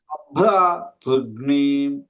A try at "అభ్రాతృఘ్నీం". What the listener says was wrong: అబ్బే కాదండి అభ్రాతృఘ్నీం ఘ్నీం అనుదాతం అభ్రాతృఘ్నీం అబ్బే తురు అనుదాతం చెబుతున్నారు. అభ్రాతృఘ్నీం అభ్రాతృఘ్నీం